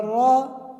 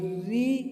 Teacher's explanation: اس را میں را کو زبر اور پیش کی صورت میں پر پڑھیں گے، اور را کے نیچے کسرہ ہو تو را کو باریک پڑھیں گے